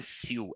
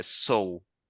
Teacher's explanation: que é como se fosse o ditongo O com U